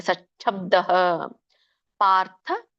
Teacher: ಸಚ್ಛಬ್ದ ನೋಡಿ, ಚಕ್ಕೆ ದೊಡ್ಡ ಛ ಒತ್ತಿದೆ. ಸಚ್ ಅಲ್ಲಿ ಚ ವ್ಯಂಜನ ಬಂದು ದೊಡ್ಡ ಛ ದೀರ್ಘವಾಗಿ ಉಚ್ಚಾರಣೆ ಆಗುತ್ತೆ.